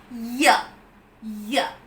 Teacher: It's a voiced sound, and hence it's a voiced, unrounded, palatal semi-vowel. Voiced because the vocal cords are vibrating.